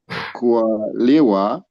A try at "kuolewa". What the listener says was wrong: It's not liwa. Now you don't bring this as li. It's a le. So just maintain it as a le. Kuolewa, not liwa.